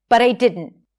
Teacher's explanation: Notice how she flaps the T. When the T is between two vowels, you flap it so it sounds like a [ɾ] sound. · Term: flap T